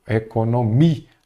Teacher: A sílaba forte é o mi. Se é o mi, ela é uma palavra paroxítona terminada em A.